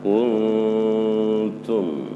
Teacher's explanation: Kuntum disertai dengan gunnah ya, suara dengungan